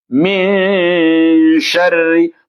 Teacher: Bukan harakatnya mim, juga bukan harakatnya shin. Harus ada di antara kedua, di antara min dan shin ini harus ada bunyi dengung.